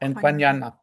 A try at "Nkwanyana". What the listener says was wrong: I think N is silent. Kwanyana.